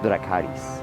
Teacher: can get away with doing the R as just a flap or tap R